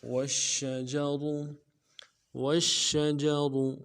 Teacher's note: شین کے اوپر تشدید زور دیں گے، اور جیم کو نرم سے ادا کرنا ہے، را کو موٹا ادا کرنا ہے